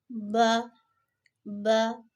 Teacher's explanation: جب ہونٹوں کے گیلے جو حصے ہوتے ہیں، تری والے حصے جو ہوتے ہیں، دونوں کے ملنے سے با ادا ہوگا